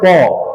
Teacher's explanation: ये दोनों ओठ जो होता है ना उसका सट जाता है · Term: ओष्ठ